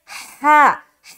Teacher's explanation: हा बिल्कुल सीने के नीचे हिस्से से निकालेंगे